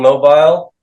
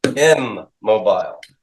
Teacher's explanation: the N assimilates to the next consonant and becomes a copy of the consonant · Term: assimilation